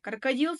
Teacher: Ал крокодил сөзінде соңғы үшінші буынға түсіп тұр. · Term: ударение